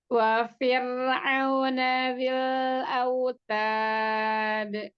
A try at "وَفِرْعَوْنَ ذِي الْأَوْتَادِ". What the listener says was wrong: Ta, dihamaskan lagi huruf taknya.